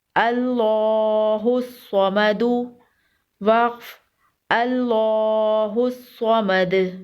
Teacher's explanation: اللہ کے لام کو پر پڑھیں گے۔ اللہ کے لام سے پہلے زبر ہے، اور صاد کو بھی پر پڑھیں گے۔ صاد بھی حروف مستعلیہ میں سے ہے۔